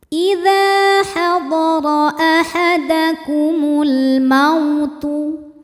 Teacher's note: Jangan lupa keluarkan hamas di huruf ta.